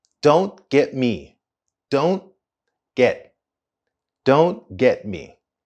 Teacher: we don't complete the full pronunciation of T in don't and get